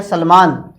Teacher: जब सलेट का आप बोलते हैं सलमान, तो आपके जो जीभ है वो दांत के टच होती है, ये मुर्दा के टच होता है षटकोण वाला। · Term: दंते वर्ण